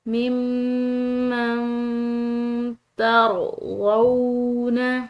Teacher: نون ساکن کے بعد تا رہی ہے جو کہ حروف اخفا کے حروف میں سے ہے، تو اس نون ساکن پر ہم نے اخفا کرنا ہے، اور میم جو ہے مشدد اس پر غنہ، اس کو پڑھتے ہیں ممن ترضون۔